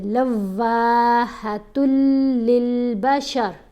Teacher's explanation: تا کو لام سے ملانا ہے, واؤ کو تھوڑا سا لمبا کر کے پڑھنا ہے. پہلے لام کو واؤ سے ملائیں گے مضبوطی سے, واؤ کے اوپر تشدید ہے